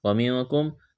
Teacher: نون ساکن کے بعد کاف ہے، یہاں پر اخفا کریں گے